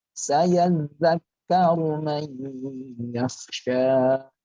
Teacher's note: Ditasdidkan itu untuk double dan disambung.